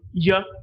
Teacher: the front of the tongue is the active articulator and hard palate is a passive articulator